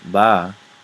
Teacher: But if I say ba, it will, with a falling tone, it'll be the river or the mother